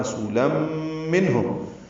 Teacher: تنوین کے بعد میم آنے کی وجہ سے ادغام ہو رہا ہے ، رسولاً منہم، ادغام ناقص ہے، غنہ ہوگا، منہم میں اظہار